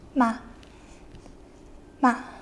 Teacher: the fourth tone is sharp almost as if you were yelling